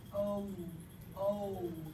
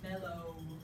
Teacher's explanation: you could have a diphthong like oh oh which goes like this mellow